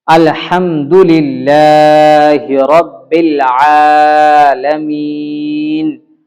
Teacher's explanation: نون پہ زبر ہے لیکن ہم لوگوں نے وقف کر کے عالمین پڑھا